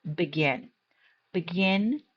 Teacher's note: The second syllable is stressed. You can see that the arrow is pointing to the second syllable stress mark.